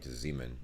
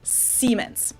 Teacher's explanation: pronounce it with a voiced s which would be a z in english siemens while english speakers pronounce it with a voiceless s